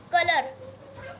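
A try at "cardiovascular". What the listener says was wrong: Because color, C-O is color, na? C-U is cooler, right?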